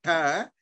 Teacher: the retroflex is pronounced like slightly more to the back, like in between the palatal and the dental